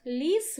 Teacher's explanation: While in the next word, lis, we also have 3 sounds, but L here already becomes soft because it's followed by sound E